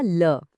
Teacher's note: पार्श्व का मतलब होता है साइड या बगल। तो जब हम ल बोलते हैं ना तो हमारी जीभ की नोक ऊपर दांतों से लगती है और हवा साइड से बगल से निकल जाती है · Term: पार्श्विक ध्वनि